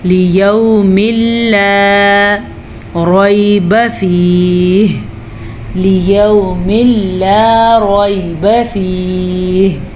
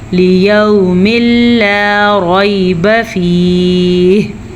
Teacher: دونوں کو آپس میں ملائیں گے لیکن بغیر غنے کے ملائیں گے، اسے کہتے ہیں ادغام بلا غنہ